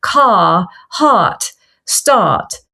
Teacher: Where it has the R, the post-vocalic R we call that is dropped. So you're not dropping it at the beginning of the word.